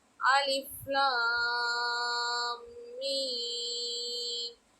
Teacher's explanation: இங்கு அலிஃபை மத்து செய்யாமல் சாதாரணமாக ஓதணும் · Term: அலிஃபில் மத்து இல்லை